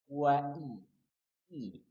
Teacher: Kemudian hamzah dari pangkal tenggorokan dan pastikan rahang turun. Karena dia berharokat kasrah.